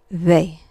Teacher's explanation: It's pronounced sort of in between a B and a V